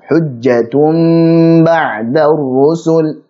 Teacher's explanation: contoh dari iqlab, dipanjangkan gunnahnya